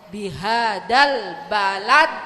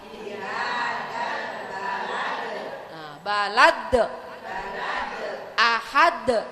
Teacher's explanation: Nah, kalau ini matinya itu tidak asli karena dia berhenti karena ada tanda wakaf, ada tanda berhenti. Makanya pantulannya lebih kuat. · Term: qalqalah kubro